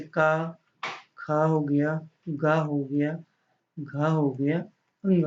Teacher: का वर्ग जो होगा, का वर्ग जो होता है वो कंठ में आ जाता है